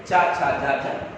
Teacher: तालु से, जीभ तालु से छिपती है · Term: तालव्य व्यंजन